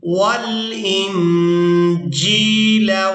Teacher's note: نون ساکن پر اخفا کریں گے، یعنی نون کی آواز کو ناک میں چھپا کر ادا کریں گے۔